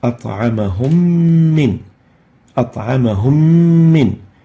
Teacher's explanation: We're going to merge the first meme sakina with the second meme, producing a shadda and a color green indicating the ghunna.